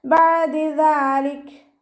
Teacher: ഇനി വഖഫ് ചെയ്യുകയാണെന്നുണ്ടെങ്കിൽ കാഫിന് സുക്കൂനാവുമ്പോൾ കുറച്ച് എയർ പുറത്തോട്ട് പോണ സൗണ്ട് കൊടുത്തിട്ട് വഖഫ് ചെയ്യുക